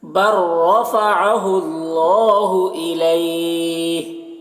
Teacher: यहाँ पर हा का ज़ेर सुकून से बदल जाएगा वक्फ की सूरत में, तो फिर यहाँ पर मद्दे लीन आरिज़ होगा। मद्दे लीन आरिज़, इसमें तूल तवस्सुत कसर तीनों जायज़ होता है, लेकिन कसर ऊला होता है, यानी एक अलिफ के बराबर खींचना बेहतर होता है, तो उसको इस तरीके से पढ़ेंगे।